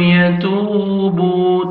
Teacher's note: تا کو باریک پڑھنا ہے 1 سیکنڈ تا کو کھینچنا ہے واو مد ہے اور با کو بھی 1 سیکنڈ کھینچنا ہے واو مد ہے.